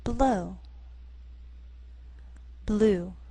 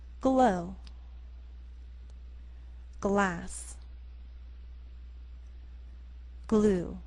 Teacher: in general L is a voice consonant there is the sound of your voice from beginning to end but when L follows P or C it actually begins voiceless